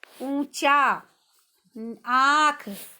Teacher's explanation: अनुस्वार में तो बच्चों केवल नाक से हवा निकलती है शब्दों के बोलते समय और ऊपर बिंदु लगता है, लेकिन अनुनासिक में बच्चों हवा मुख और नाक दोनों से निकलती है